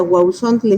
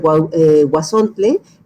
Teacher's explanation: En español es muy difícil tener triptongos, entonces generalmente lo que hacemos los hablantes es simplificar el triptongo y lo hacemos diptongo